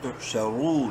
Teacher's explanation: را کو منہ بھر کے پڑھتے ہوئے ایک الف برابر لمبا کریں گے، واو مدہ کی وجہ سے، تحشرون، نون زبر نہ، تحشرون وقفاً، تحشرون، چلیے ایک دفعہ سارا پڑھ لیتے ہیں.